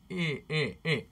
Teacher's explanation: the tongue starts very far forward for I.